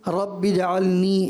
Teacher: یا مد ہے، مد اصلی، اس کو ایک ہی الف کے برابر، اس سے زیادہ نہیں کھینچنا